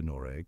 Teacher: in some parts of Norway particularly in the west and south nor takes on a softer almost vowel-like quality transforming into noreg with the GG barely audible like a whisper